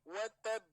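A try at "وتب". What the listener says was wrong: Nah, itu kan kurang. Watab. Ada jeda dulu.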